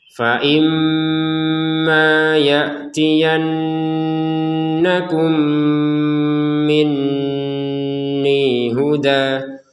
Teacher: Fa imma ya'tiyannakum minni huda. Mim sukun bertemu mim, kita masukkan mim yang pertama kepada mim yang kedua, kemudian disertai dengungan · Nun bertasydid juga sama, ya, didengungkan. Mim bertasydid, nun bertasydid, maka sama-sama kita dengungkan.